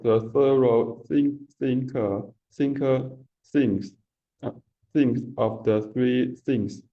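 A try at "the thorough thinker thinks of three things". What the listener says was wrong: Okay, not bad.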